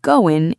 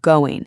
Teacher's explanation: we completely dropped the letter G at the end of the word going. We do that with so many words that end in ing.